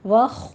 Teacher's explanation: واو کو آپ نے موٹا نہیں کرنا، واو باریک ہی رہے گا، خو کو پر کرنا ہے